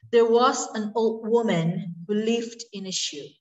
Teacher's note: So in the stressed syllable here is was, who, lived, and shoe.